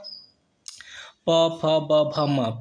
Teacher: जब तक ऊपर का होंठ और नीचे का होंठ दोनों टच नहीं करेगा तब तक प फ ब भ म नहीं कह सकते। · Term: ओष्ठ